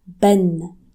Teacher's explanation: With double Fatha, you say Ben. It is read as if it's connected to a noon, an N sound, but it's not.